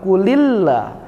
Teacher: Tapi idgham syamsi dimasukkan seperti kita mengatakan asyamsi, sehingga lamnya, lam yang pertamanya tidak dibaca, langsung masuk ke lam yang kedua